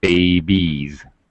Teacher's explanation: baby ends with a vowel sound, so the pronunciation is still a Z sound